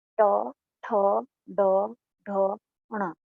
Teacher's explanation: हम बोलते हैं ट, ठ, तो हमारी जीभ ऊपर जाकर के गड्ढे में लगती है, उसको मूर्धा बोलते हैं। तो ये वर्ण मूर्धन्य वर्ण कहे जाते हैं।